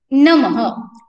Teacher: विसर्ग का उच्चारण ह करते हैं